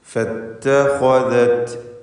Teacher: ഇവിടെ ഖാഇന് മാത്രം തഫ്ഖീം കൊടുക്കുക. ഇസ്തിഅലാഇൻ്റെ അക്ഷരമാണ്.